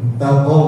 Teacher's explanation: hurufnya di pangkal lidah ya qaf itu. Bukan harus qa gitu.